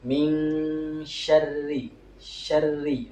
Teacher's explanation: huruf ro dalam keadaan bertasydid, maka suaranya harus tipis ya. Soalnya ro ini dalam keadaan bertasydid plus dia dalam keadaan kasroh ya.